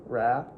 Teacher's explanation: That tongue tip was up in your mouth and way back.